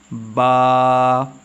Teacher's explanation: اس کا مخرج یہ ہے کہ اسے ہم دونوں ہونٹوں کو ملا کر پڑھتے ہیں